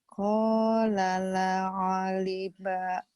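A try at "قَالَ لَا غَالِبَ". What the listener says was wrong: qala la go bukan a ya go. La-nya panjang. la qala la ghaliba.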